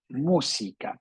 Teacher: Palabra esdrújula, lleva la fuerza en esta tercera o antepenúltima, última, penúltima, antepenúltima sílaba.